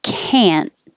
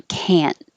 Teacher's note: The negative is stretched longer and you hear the vowel ah, but you don't hear the T because you just hold the tongue in the T position.